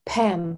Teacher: Дыхание на п обязательно